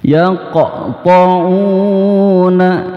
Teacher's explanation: Yaqta'una itu qaf sukun, ya, makanya dipantulkan, maka disebut di sini qalqalahnya qalqalah sugro.